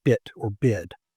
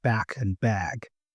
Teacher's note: anytime you have a difference in that final consonant, the vowel also adjusts itself and shows a difference. And this is something we do automatically. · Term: vowel adjustment